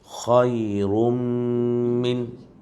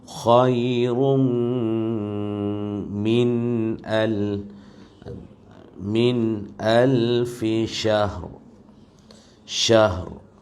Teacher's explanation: Khairum min idgham maal ghunnah. Maknanya di sana ada dengunglah.